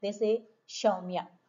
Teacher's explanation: And if you come to the eastern, there is no s sound. They say sh only.